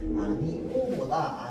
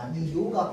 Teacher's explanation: 다음 아니오도 마찬가지예요. 앞말에 모음 이가 있고요. 자, 그 상태에서 뒤에 어떤 단모음이 있으면요, 얘가 반모음 이가 추가돼가지고 아니오보다 아니요가 발음하기 더 편합니다.